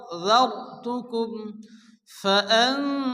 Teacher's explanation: নুন সেকেন্ডের পরে হরফে ইখফা ৫ অক্ষরের মধ্যে দাল এসে এক আলিফ গুণনা করে পড়তে হবে